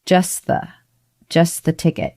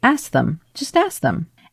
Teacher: happen in a quick amount of time with the tongue and most native speakers actually just get a little bit lazy and skip the T and go right into the th